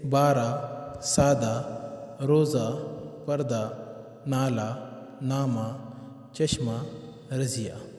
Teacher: الفاظ کے آخر میں آنے والی گول ہا جو مختصر طور پر پڑھی جائے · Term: ہائے مختفی